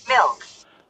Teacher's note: 그래서 여러분들이 이걸 알아보면서 음절에는 반드시 필요한 게 모음이구나. 그런데 미국, 영국 등에서는 이 MILK 할 때 K 발음이 모음 없이도 날 수 있구나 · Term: 한 음절